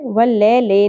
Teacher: یا ساکن سے پہلے زبر، یا ساکن حرف لین ہے، نرمی سے پڑھنا ہے، واللیل نہیں پڑھنا، مجہول طریقے سے نہیں پڑھنا، واللیل لام سے لی۔